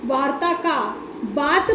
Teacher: इसी प्रकार से वार्ता का बात बन गया, र का लोप हो गया और वार्ता से बात बन गया।